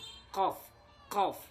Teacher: Huruf qaf ini tempat keluarnya dari pangkal lidah dengan langit-langit atas yang berdaging. Qaf, qaf dari pangkal lidah.